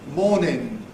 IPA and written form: ˈmɔːnɪn (morning)